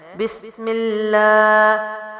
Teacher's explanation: اللہ کے لام سے پہلے حرف کے نیچے زیر ہو تو اللہ کا لام باریک پڑھا جاتا ہے، تو میم کے نیچے زیر ہے، تشدید کی وجہ سے ملائیں گے۔ لام کھڑا زبر ہے، لمبا کریں گے، ہا سینے سے ہے